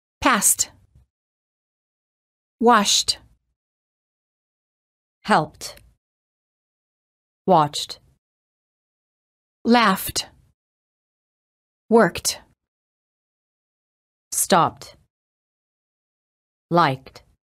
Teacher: If the last letter of the word ends in a voiceless consonant, the E is silent and the D is pronounced as T